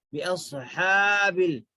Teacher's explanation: اور ہا کی آواز حلق سے آنا ہے. بِأَصْحَابِ فیل نہیں بولیں گے, بِأَصْحَابِ.